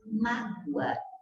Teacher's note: você tem o fonema U representado aqui pela letra O, pronunciada na mesma sílaba com a vogal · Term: semivogais